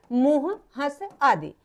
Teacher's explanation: अनुनासिक का उच्चारण नाक और मुख से होता है